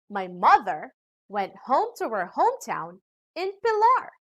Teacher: pilar is a noun and it is the last content word in this sentence so we put the stress and emphasis to this word